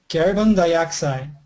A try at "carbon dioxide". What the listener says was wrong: More R. Carbon dioxide.